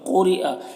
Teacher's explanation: क़ुरिअ, क़ाफ़ को पुर पढ़ेंगे, ये हुरूफ मुस्तालिया में से। रा के नीचे ज़ेर है, रा को बारीक पढ़ेंगे। यहाँ पर हमज़ा है या की शक्ल में, तो हमज़ा इसे पढ़ना है।